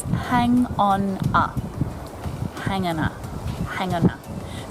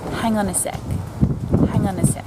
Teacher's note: the consonant sounds at the ends of these words link straight to the vowel sounds that follow